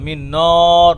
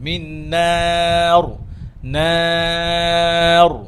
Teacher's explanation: নুন যেন মোটা না হয়, র মোটা হবে থেমে গেলে, কিন্তু নুন নুন আলিফ যে মাদ, এই মাদ যেন মোটা, মিন নর না হয়, মিন নার, নার।